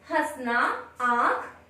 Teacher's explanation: अनुनासिक, अनुनासिक में इसकी चंद्र बिंदु मात्रा होती, तो अनुनासिक का उच्चारण नाक और मुंह दोनों से होता है